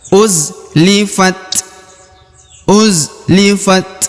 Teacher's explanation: huruf ta yang berharakat sukun jadi dia kita membacanya dengan ya mengeluarkan sedikit hembusan udara